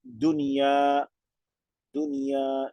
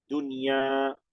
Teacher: Si nosotros al decirlo, es como si le agregáramos una kasra a la nun sukun, pero no, es una nun sukun, no una nun kasra, pero en el sonido se mimetiza, ¿no? Se mimetiza en el final el sonido de la ya con una nun sukun.